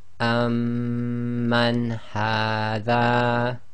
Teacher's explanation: And the last one is amman hadha. So the noon sakin is followed by one of the throat letters, so it's pronounced clearly, i.e. idhar.